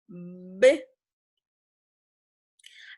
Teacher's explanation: cuando pronunciamos una B, a ver, intenten hacer la B, ya hay una vibración